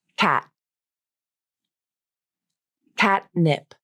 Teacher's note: Now the unreleased T and D consonants. Unreleased T with tongue tip up